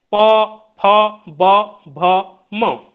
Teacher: हमारे जो होठ हैं, ओष्ठ, ऊपर और नीचे दोनों हिस्से के ओठ आपस में टकराते हैं, आपस को स्पर्श करते हैं, और जो ध्वनियां निकलती है प फ ब भ म, ओष्ठ ध्वनियां।